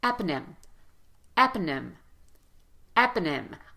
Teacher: proprietary proprietary perfect there's also another strong syllable here in eponym it's the first syllable in eponym so again vowel is louder and longer